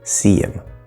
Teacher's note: him is being reduced to just in the H is disappearing